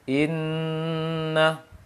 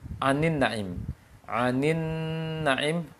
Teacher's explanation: Ada syiddahnya, ada rakhawahnya. Tertahan di makhraj nun dan mengalir suaranya. Lisan tertahan di makhraj nun, gusi ujung lisan ke gusi di atas dan suaranya mengalir. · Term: nun tasydid